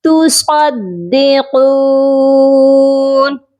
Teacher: تُصَدِّقُونَ صاد کو موٹا کر کے پڑھا جائے گا اور قاف کو بھی ہم موٹا کریں گے اور ایک الف کے برابر لمبا بھی کریں گے کیونکہ یہ واو کے ساتھ پڑھا جا رہا ہے.